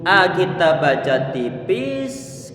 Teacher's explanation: Kemudian wa ini tipis karena dia termasuk punya sifat istifal. Ucapannya dia lidah ini dia turun ke bawah ataupun dalam keadaan standar tidak dinaikkan ke atas.